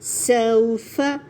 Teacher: سو کے لیے ہونٹ پورے گول ہو جائیں گے، پلس سین کی وسلنگ کو نمایاں کریں